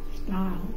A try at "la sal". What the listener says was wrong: You're saying stal. Sal. Sal. Sal.